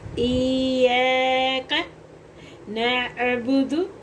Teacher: या हरूफ मुशद्दद है, यानी कि तशदीद वाला हरूफ है, तो इसको थोड़ा सा सख्त भी पढ़ेंगे, हल्का सा इसको जो है ना गुन्ने वाली शक्ल में पढ़ेंगे। · आइन हरूफ हल्की है, हलक के दरमियान वाले हिस्से से अदा हो रहा है। बा और दाल को बिल्कुल लंबा नहीं करेंगे क्योंकि हरकत है।